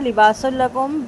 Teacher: سین کی تنوین کے بعد لام ہے، یہاں پہ ادغام بلا غنہ ہوگا